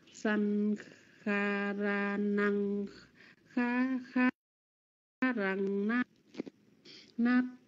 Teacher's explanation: San là trường âm nhấn, kha ra là hai trường âm thông thường